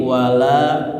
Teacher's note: Jadi nunnya melebur ke lam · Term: idgham bila guna